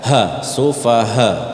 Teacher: Dia ngambilnya di pangkal tenggorokan. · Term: huruf H